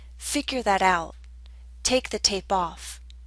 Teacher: while both the verb and the particle are stressed the particle tends to receive slightly more stress